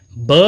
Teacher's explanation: ब जो व्यंजन है सघोष भी है और ओष्ठ्य भी है, लेकिन महाप्राण नहीं है, यह अलप्राण के अंतर्गत आता है।